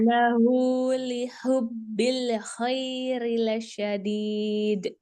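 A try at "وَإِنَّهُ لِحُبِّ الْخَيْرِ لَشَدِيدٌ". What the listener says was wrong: Iya, bagus. Terus yang kedua.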